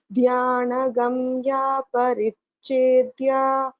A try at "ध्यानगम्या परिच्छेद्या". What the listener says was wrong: In the second line, this cha should be pronounced more clearly, both this cha and cha. Dhyaнаgamya parichedya.